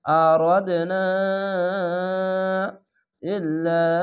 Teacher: চিকন চিহ্ন মাদ্দা আরজি 3 আলিফ টেনে পড়বেন